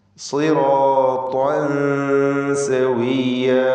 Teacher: താഇന് പൂർണ്ണമായ തഫ്ഖീം കൊടുക്കണം എന്ന് നാം പറഞ്ഞു. താഇൻ്റെ ഫത്ഹ് പൂർണ്ണമായ തഫ്ഖീമോടെ മഫ്തൂഹായ താ ഉച്ചരിച്ച് ഉടനെ തൻവീനിൻ്റെ ശബ്ദം തർക്കീഖോടുകൂടിയുള്ളതാക്കി മാറ്റണം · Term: ഇഖ്ഫ ഹഖീഖി